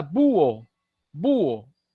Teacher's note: El acento rompe el diptongo en un hiato.